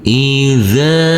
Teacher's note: huruf dalzal yang berfathah a bertemu dengan huruf alif yang tidak berharakat maka huruf zzal kita baca dengan panjang dua harakat